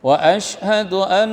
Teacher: nun tasydid, tahan sejenak, biar dengung